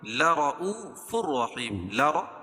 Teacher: را کو پور پڑھیں گے کیوں را کے اوپر زبر ہے